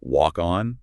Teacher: If you were to look at a soundwave of a phrase like walk on, >> you'd see the final K sound of walk and the initial vowel of on just merge seamlessly. There's no gap. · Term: connected speech